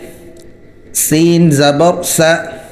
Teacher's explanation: سین سیٹی کی طرح نکلے گا، دانت ملا کر سیٹی نکالنی ہے۔